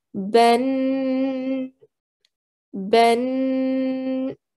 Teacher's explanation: you will make a nasal sound for two counts or two seconds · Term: tanween